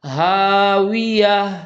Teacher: ہا ادا کرتے ہوئے ہونٹ گول کرنے ہیں، اس لیے کہ ہونٹ ہی واو کا مخرج ہے